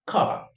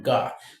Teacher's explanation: the focus is going to shift from the voiceless velaric plosive to the voiced velaric plosive